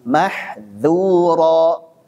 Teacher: Jadi dzal sama sinnya antum betul-betul murnikan infitahnya itu, tipiskan tuh. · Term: sifat infitah